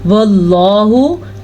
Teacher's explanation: लफ्ज़ अल्लाह को फिर से पुर पढ़ेंगे क्योंकि लफ्ज़ अल्लाह से पहले ज़बर है।